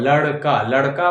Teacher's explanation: उच्चारण इसका मुर्धा से है लेकिन जीभ हमें ले जाना है तालू की तरफ